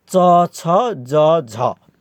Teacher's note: स्पर्श सङ्घर्षी भनेको चाहिँ उच्चारण अवयव कहीँ न कहीँ छोइने र श्वास बाहिर निस्किँदाखेरि श्वासमा जोड गर्ने अथवा उच्चारण अवयव कहीँ न कहीँ छोइने र श्वास बाहिर निस्किँदा श्वासमा जोड पर्ने खालका चाहिँ वर्णहरू स्पर्श सङ्घर्षीमा पर्छन्।